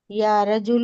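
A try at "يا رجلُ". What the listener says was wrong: یا رجل غلط ہے یا رجل نہیں بیٹے پلیز یا رجل نہیں بولیں گے صرف پیش لگائیے آخری میں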